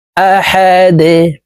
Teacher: দাল কল কলার হরফ নিচের দিকে ধাবিত করে ধাক্কা দিয়ে উচ্চারণ করতে হবে